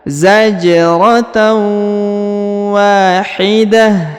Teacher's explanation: Nah, kemudian huruf wa-nya dipanjangkan 2 harokat karena di depannya terdapat alif